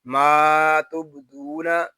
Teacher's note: وَأَعْلَمُ ما تبدون، میم کو ایک الف تک کھینچ کر پڑھیں گے کیونکہ یہاں الف مدہ ہو رہا ہے، با ساکن میں کلکلا ہوگا. دال کو ایک الف تک کھینچ کر پڑھیں گے کیونکہ یہاں واو مدہ ہو رہا ہے